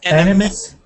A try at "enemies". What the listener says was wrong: enemies. Okay, so give me an E sound there at the end. Enemies. An E. Okay, the Z is fine, but we need an E here. You're saying enemies. enemy. Enemies.